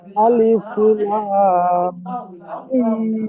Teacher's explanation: প্রথমে লাম টান দিতে হবে, মিম গুণনা করতে হবে, তারপরে মিম টানও দিতে হবে।